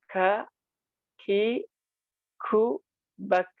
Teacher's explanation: Kalau huruf kaf, dia mengeluarkan nafas, teman-teman.